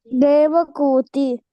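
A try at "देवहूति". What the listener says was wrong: Devahuti. Kuti kaadu nana, Huti. Devahuti.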